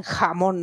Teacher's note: es más una aspiración en méxico